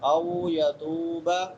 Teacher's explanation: او واو لین ہے، واو ساکن ما قبل فتحہ ہے. او یتوب، یتو تا کے بعد واو مدہ ہے، واو ساکن ما قبل ضمہ ہے.